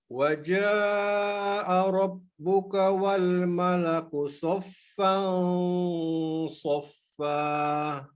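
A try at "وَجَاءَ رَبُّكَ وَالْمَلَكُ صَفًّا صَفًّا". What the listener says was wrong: Mumtaz Murtafi.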